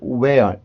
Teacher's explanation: where 그냥 h가 없는 것처럼 소리가 나고